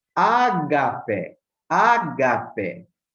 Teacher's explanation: tem assim o som mais forte aqui no alfa, que é acentuado